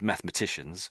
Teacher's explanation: I'm sort of missing out that e sound in the middle